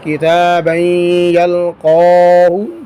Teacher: یہاں پر نون تنوین کے بعد رفع جر ملون میں سے یا آیا ہے تو غنّے کے ساتھ ادغام ہوگا